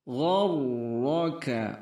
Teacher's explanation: Gharraka, ra-nya tebal, gha dijaga